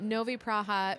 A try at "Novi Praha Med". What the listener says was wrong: Novi Praha Med. Med is the honey. You just forgot one of the words.